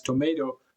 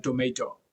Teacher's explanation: The second T in tomato comes somewhere between D and R